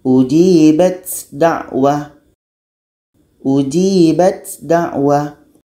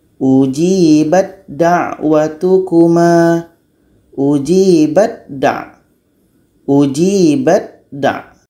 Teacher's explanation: kalau huruf pertama Ta ini sudah masuk kepada da huruf ta masuk kepada da · ta beranginnya masih terdengar maka belum terjadi idgham Kamil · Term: Idam Kamil